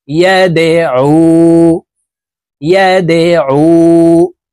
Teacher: আইন ওয়াও পেশ উ, পেশের বাম পাশে জজমালা ওয়াও মদের হরফ হইলে ডান দিকের হরকতকে এক আলিফ টানিয়া পড়িতে হয়। তো এই আইন জজমালা ওয়ার সাথে এক আলিফ টানিয়ে পড়ব, এই মদকে মধ্যে তবাই বলা হয়।